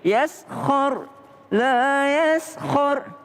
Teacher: Sin tipis, kho-nya tebal. Jadi yaskhar, la yaskhar.